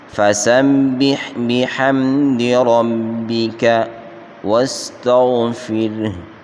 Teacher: را کو موٹا پڑھیں گے، با شد کو سختی سے پڑھیں گے، اور باقی کسی حرف کو کھینچ کر نہیں پڑھنا، یوں پڑھیں گے فَسَبِّحْ بِحَمْدِ رَبِّكَ وَاسْتَغْفِرْهُ، غین کو موٹا پڑھیں گے، اور ہا کے اوپر جب وقف کر لیا تو یہ ساکن ہو جائے گی، باقی کسی حرف کو لمبا نہیں کرنا۔